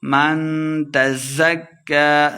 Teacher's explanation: من اخفا یعنی غنہ کر کے پڑھیں گے